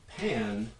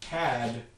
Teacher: a nasal one before nasals and an oral one not before nasals